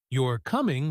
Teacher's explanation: with falling intonation, it sounds much more like a confident statement or even a light command